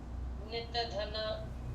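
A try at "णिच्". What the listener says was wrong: दीर्घ धन नहीं, जैसे मैंने पढ़ा अभी उसी तरह से पढ़िए।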